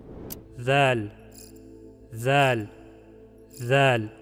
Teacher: Зәл өте жіңішке әріп. Тілдің ұшы екі тістің арасынан сәл шығарылады да, ауа іштен болмашы ғана екпінмен сыртқа қысылып шығарылады.